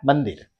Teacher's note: जैसे मंदिर पढ़ते हैं तो म जो है त वर्ग का व्यंजन वर्ण है, इसलिए अनुस्वार अंग की मात्रा का जो उच्चारण है न के रूप में होगा